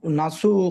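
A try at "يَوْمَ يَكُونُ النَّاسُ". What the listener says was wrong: নাস না, তা একালিক পরিমাণ টান দেন, নুন আলিফ জবর না, আলিফে মাদ্দা, একালিক পরিমাণ টান দিয়ে পড়তে হয়।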